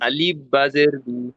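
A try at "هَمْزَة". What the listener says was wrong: আলিফ নয়, হামজা। আলিফের পর যখন জাবার জের পেশ সাকিন কিছু থাকবে তখন হামজা হয়ে যাবে।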